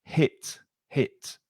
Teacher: H sound on hit. It's not from the throat.